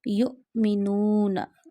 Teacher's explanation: When this dal shaped sign, jazm sign comes on any letter, the letter becomes Sakin. We read Hamza Sakina always with a sudden jerk. Ya Hamza Pesh Yu'minuna.